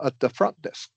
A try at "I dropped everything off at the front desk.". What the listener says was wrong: The front. So so there you said and drop everything. Yes, off at the front desk. You don't need to emphasize front. Just you just emphasized everything off at the front desk.